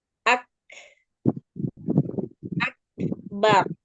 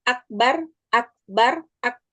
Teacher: setelah kita beri sifat syiddah selanjutnya diikuti dengan sifat hams